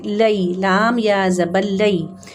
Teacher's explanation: یا لین کو زبر سے ذرا سا تھوڑا سا بڑھا کے پڑھتے ہیں لیکن 2 حرکات تک نہیں لے کے جاتے اور نرمی سے پڑھتے ہیں